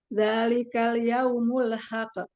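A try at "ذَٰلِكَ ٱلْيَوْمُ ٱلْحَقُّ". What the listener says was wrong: Qafnya dia qalqalahnya ditahan sebentar ya, karena dia tasydid ya. Dzalikal yaumul haqqo.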